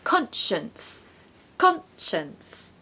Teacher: we really need a strong Con in the first syllable it's not awah no it has to be stressed okay so · The second syllable has a schwa.